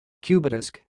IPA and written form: ˈkjuːbˌdɪsk (cubedisk)